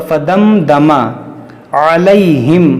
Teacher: यहाँ पर इज़हार शफ़वी होगा, यानी गुन्ना नहीं होगा।